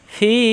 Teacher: ফি মাদের হরফ মাদে আর্ধি তিন আলিপ টান হয়ে যাবে।